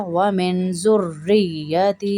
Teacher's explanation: را اور یا میں دونوں میں سختی ہوگی